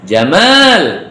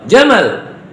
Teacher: Kalau ganteng panjang, kalau onta pendek. Jamal, nah berarti ganteng tuh.